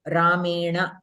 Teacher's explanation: When you are pronouncing Ra, Refa or R, the Rishi R or Sh, for all these letters, the Swarasthana is Murtha, means you are curling up your tongue, the tip of your tongue is touching the roof of your mouth. And immediately if it is followed by Na, the regular Na, the regular Na belongs to Ta Varga.